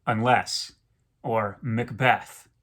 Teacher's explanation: they have the pattern unstressed stressed